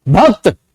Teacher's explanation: भय के बाद ए की आवाज बहुत देर तक आई